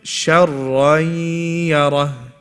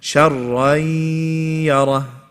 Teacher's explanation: I joined the ra with the ya and I cancelled out the noon sakin. It's not being pronounced. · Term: idgham with ghunnah